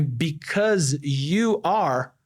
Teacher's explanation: Because é um som de Z. Aí because you are, aí esse Z ficou J. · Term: assimilação